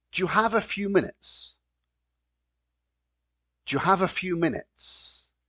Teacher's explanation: notice particularly here the words do you when we put them together Jew